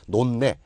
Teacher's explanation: 앞쪽에 히읗 받침이 니은으로 발음이 납니다. 니은, 니이 돼요. 여기까지는 외우면 되고요.